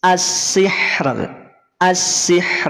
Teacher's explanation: ro sukun sebelumnya ada sukun ha dan sebelumnya ada kasrah maka rnya menjadi tipis